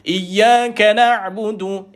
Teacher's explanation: Ya balik atas jumpa ain sukun. Ya, nama dia tawassut. Dia duduk di tengah-tengah bunyi dia. Ya, tengah-tengah kerongkong. Dah tengah-tengah kerongkong, baca pun kena tengah-tengah.